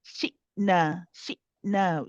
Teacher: Shidda means that it has a sharpness to it. The sound, when it is sakin, the sound cuts off. We stop the sound all of a sudden. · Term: hamza